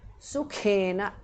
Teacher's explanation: Charan sukhena kha mahapranah